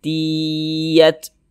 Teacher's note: jadi suaranya itu kita tahan kita panjangkan sejenak tiat Ti Ya di bagian tnya itu kita tahan kita panjangkan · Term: gunnahkan